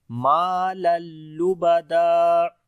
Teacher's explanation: तनवीन के बाद लाम आ गया, इदगाम करेंगे बगैर गुन्ना के , और जब रुकेंगे तो दो ज़बर हैं आखिर में, तो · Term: इदगाम बगैर गुन्ना